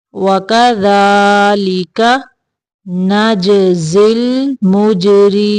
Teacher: یہاں پہ را کو باریک کریں گے